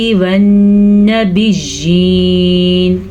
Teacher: نون پہ شد آ گئی ہے تو نون کے اوپر غنہ کرنا ضروری ہے، لازمی ہے.